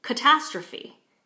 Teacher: we can hear that there's a stress on the second syllable